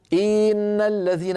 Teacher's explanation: الآن أنا تعمدت تطويل كسرة إن فتولد منها ياء منطوقة، ياء لفظية. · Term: الإشباع